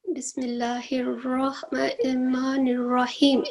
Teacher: اس کو ہم مد عارض وقفی کی وجہ سے لمبا کر سکتے ہیں